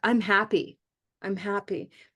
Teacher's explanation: usually we wouldn't put any stress on I'm like I'm happy I'm happy but in this special phrase we're going to say